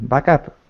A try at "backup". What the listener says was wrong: Not app, but up. Back up.